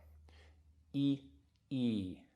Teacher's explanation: And the second one actually takes a little longer, like a second beat.